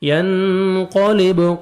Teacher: کرتین ینقلب، نون ساکن کے بعد قاف ہے، آپ نے اخفا کرنا ہے. ینقلب، قاف کو موٹا کر کے پڑھیں گے، با حروف قلقلہ میں سے ڈبل ساؤنڈ آئے گا